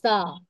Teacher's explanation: सा, जबान की नोक और ऊपर के सामने के दो दांतों के किनारों से अदा होता है